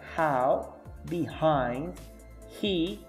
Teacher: Your vocal cords should not vibrate. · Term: voiceless sound